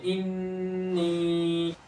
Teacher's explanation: गुन्ना भी करेंगे और या मद्दा भी करेंगे